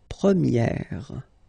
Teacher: So it's open, this eh sound